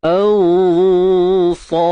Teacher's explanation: Ikhfa haqiqi, tebal sebab sad tebal. Maka dengung yang kita buat tu tebal lah.